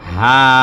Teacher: হায়ের মধ্যে একালি পরিমাণ টান আছে, এই জন্য টান দিছি।